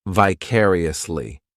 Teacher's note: This adverb has five syllables and the stress is on that second syllable, · The third syllable, it's like that letter I, just has that e sound. And the fourth syllable has the schwah.